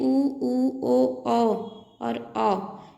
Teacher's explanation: वृत्तमुखी में उ, ओ और औ, इसमें होठों का आकार गोलाकार हो जाता है, इसलिए ये वृत्तमुखी हैं।